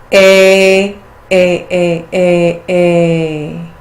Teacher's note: The palatal diphthongs end with the e sound, so the sound really comes right up to the center of the palate. We've got short a plus e.